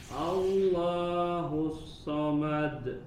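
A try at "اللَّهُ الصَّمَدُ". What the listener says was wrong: Ditebalkan huruf sodnya, ya, sempurnakan aliran nafas dan suara, kemudian desisnya ditebalkan. Allahus samad.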